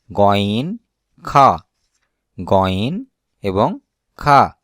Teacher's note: কণ্ঠনালীর দ্বিতীয় ভাগ হতে উচ্চারণ হয় গইন, খা